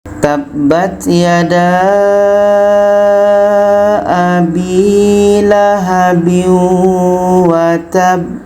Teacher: Ini qalqalah akbar. Cara baca qalqalah akbar atau cara baca ba tasydid di akhir, kita berhenti lebih kurang 2 detik. Setelah itu kita pantulkan.